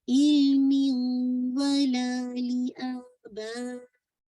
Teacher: तनवीन की आवाज नेक्स्ट लेटर में मर्ज होगी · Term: नाकिस इदगाम